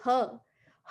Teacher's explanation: ह का उच्चारण करते हैं उसकी उत्पत्ति पुनः कंठ से होती है